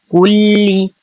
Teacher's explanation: نتم ضمة الكاف نشد اللام مع إتمام الكسر